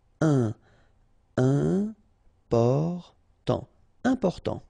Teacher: you've got this EM and after that it's a consonant. So it is here nasal.